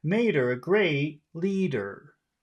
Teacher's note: keeping the high tone up until the very end